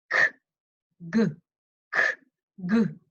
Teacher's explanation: K and G are tongue scrapers. The tongue is scraping the roof of our mouth.